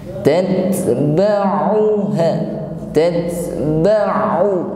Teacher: huruf ain lunak saja yang sifatnya tawassut, bukan kaku sebagaimana hamzah